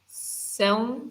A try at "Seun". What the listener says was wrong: Seun. No, it's not Sean. Sean is A. There is an A there. Seun.